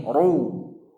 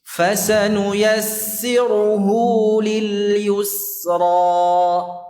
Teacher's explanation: Ra yang berharakat dhammah itu hukumnya tafkhim, bukan tarqiq ya. Mau sebelumnya kasrah atau tidak. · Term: ra dhammah